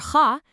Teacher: This is not a simple ka sound. This is a guttural sound way in the back of your throat. It's kind of like the sound you make when you're lightly clearing your throat.